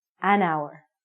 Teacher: the H word it sounds like we're saying our so because this word hour sounds like a vowel because the h is silent